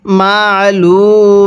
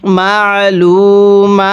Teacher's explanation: এই মিমের মধ্যে আমরা এক আলিফ টান দিব, কারণ যেই হরফের উপরে এরকম খাড়া চিহ্ন থাকবে ওই হরফটি আমাদের এক আলিফ টেনে পড়তে হবে।